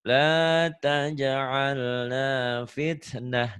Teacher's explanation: Dihentikan tak marbutoh berubah jadi ha ya.